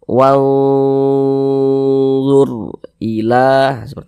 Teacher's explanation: di sini yang kita temui huruf ra sukun sebelumnya harakat dah maka huruf ro dibaca tafkhim dibaca tebal sehingganya Bangkal lisan kita ketika Kita mengucapkannya naik terangkat ke atas